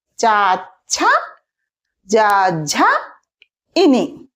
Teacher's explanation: మరి ఈ లెటర్స్ని పలికేటప్పుడు మన నాలుక ఆ ప్లేస్ని తాలుని టచ్ చేస్తుంది అనమాట